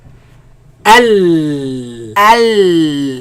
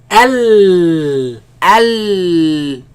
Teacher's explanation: The sound escapes from the sides. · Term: lam